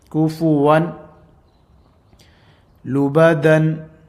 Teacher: we'll be dropping the noon sound and we'll be joining these two, but without a gunna in practice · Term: idgham